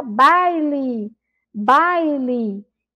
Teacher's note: Então, a sílaba mais forte é a sílaba inicial. Essa sílaba li é uma sílaba fraca.